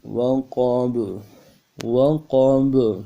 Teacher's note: با قلقلہ میں سے ہے، جب با کے اوپر جزم آ جائے تو قلقلہ کرتے ہیں